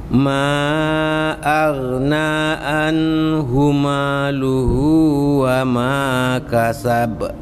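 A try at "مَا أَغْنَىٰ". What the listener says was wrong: Ma-nya kurang buka sedikit, coba Yang dibuka ma. Coba a.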